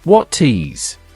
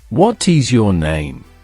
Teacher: The T sound becomes softer, almost like a soft D in this case, as it connects to the vowel. It's not a harsh, separate T. It's a smooth link.